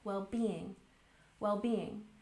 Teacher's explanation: And well-being has the primary stress on the second syllable.